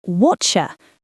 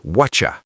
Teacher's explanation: the T sound in what blends with the Y sound in you to create a cha sound, like cheese. >> So, what you becomes whatcha.